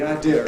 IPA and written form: aɪˈdɪər əv (idea of)